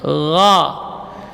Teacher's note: huruf gha sama dengan kha makhrajnya, min adnal halqi, dari ujung tenggorokan, ya, gha. Akan tetapi beda sifatnya.